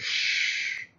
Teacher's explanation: si yo hago un sonido como shh, como cuando mando a callar a alguien y le digo shh, las cuerdas vocales no vibran